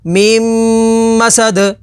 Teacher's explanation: میم زبر ما، میم ما، سین زبر سا، میم ماسا، دال دو زیر دن، میم مسدن، آگے وقف میم مسد، وقف تام کی وجہ سے دال کو ساکن کر دیں گے، دال حروف قلقلہ میں سے تو یہاں پر قلقلہ ہوگا